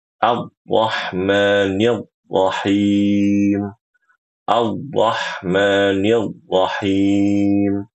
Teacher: dia menyembunyikan sifat takrir pada huruf ro